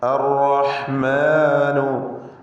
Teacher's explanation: തഫ്ഖീം ചെയ്ത് ഉച്ചരിക്കേണ്ട അക്ഷരമാണ്. ഒറ്റ റാ മാത്രമാണ്. എന്ന് വിറപ്പിച്ച് കുറേ റാ വരരുത്, സൂക്ഷിക്കേണ്ടതാണ്.